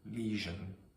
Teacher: so the j in lesion is vibrated or voiced